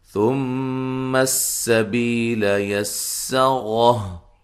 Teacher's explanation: اچھا، ثم السبیل یسرہ، یہاں سا کو نرم ادا کریں گے، میم مشدد پہ غنہ ضروری ہے، اور میم کو سین سے ملائیں گے زور سے، سین کی باریک سیٹی ہو، ٹھیک ہے، بی یا مدہ ہے، لام کو لمبا نہیں کریں گے، یسرہ یا کو سین سے ملائیں گے اور سین کو باریک سیٹی سے ادا کریں گے، اور را کو موٹا ادا کریں گے، تو وقف کی صورت میں ہا کو ساکن کر دیں گے، ٹھیک ہے جی۔